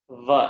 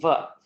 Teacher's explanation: Remember, we talked about the pronunciation of va as not being wa or ba, but rather is va, because it requires both the danta, that's your teeth, and oshtham, that is your lips. So when your bottom lip touches your top teeth, that is called dantoshtham, va, and you get this pronunciation va.